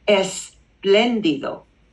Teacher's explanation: Spanish imposes an E. So we break up that consonant cluster.